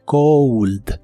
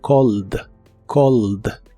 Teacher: en inglés frío es Cold con un sonido u después de la O Cold pero el verbo llamar no lleva sonido u solo o